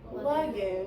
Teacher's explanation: A is going to be obscure when it's in an open, unaccented syllable, and we're going to code it with a tittle.